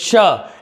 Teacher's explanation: तो ऑप्शन हमारा बी सही है, ना ये कंठ सही है, ना आपका मूर्धा सही है, ना ही आपका ओष्ठ सही है। श वर्ण का उच्चारण स्थान तालु है